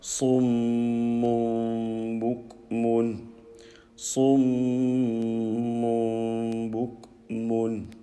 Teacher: So mim with a shadda gunna, and bukmun, this kaf, we do not vowelize.